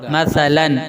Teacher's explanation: مثلا تنوین کو ظاہر کر کے جلدی پڑھنا ہے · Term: اظہار